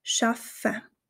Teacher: dieser Doppel F nicht wie ein langes F ausgesprochen wird sondern fast wie zwei einzelne F es wird also eine kleine Pause dazwischen gesprochen schaffen ich zeige